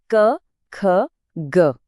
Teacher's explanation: कैसे जीभ जो है वो गले के पिछले हिस्से को छूकर हवा को एक पल के लिए रोक रही है। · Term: व्यंजन